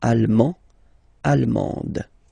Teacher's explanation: you don't pronounce the final D, but then you pronounce it here for the feminine form.